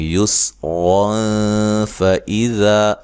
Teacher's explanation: اگر ملا کے پڑھیں گے تو یہاں نون تنوین کا اخفا مع الغنہ ہوگا، باریک اخفا کریں گے